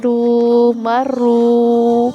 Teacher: زبر یا پیش آ جائے نا تو پھر را موٹی پڑی جاتی ہے، را کے نیچے زیر ہو تو یہ باریک پڑی جاتی ہے۔